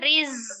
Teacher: Rinya dibaca tipis ya. Kemudian ada huruf zai, itu sifatnya as-safir, ada desisan